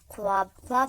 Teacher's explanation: واو جو پڑھی نہیں جاتی، لکھی جاتی ہے، اسے واو معدولہ کہتے ہیں